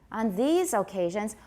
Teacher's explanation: so these gets the high pitch then we go down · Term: tonic stress